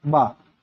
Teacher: ओष्ठ भी है, अल्पप्राण भी है, घोष व्यंजन वर्ण भी है